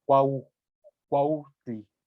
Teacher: Queda un poquito ahí como una especie que llaman aspiración, se escucha ahí en el aire